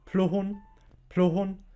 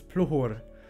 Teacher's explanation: Pluhun mit N am Ende, aber auf Toskisch, also auf Standardalbanisch, heißt es Pluhur mit R am Ende